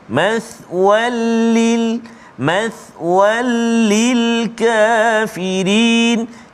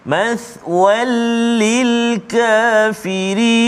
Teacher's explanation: masukkan bunyi tanwin itu ke dalam lam tanpa dengung, tak boleh dengung. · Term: idgham bila ghunnah